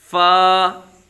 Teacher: फा ऊपर के दांतों के अंदरूनी किनारे और निचले होंठ का तर हिस्सा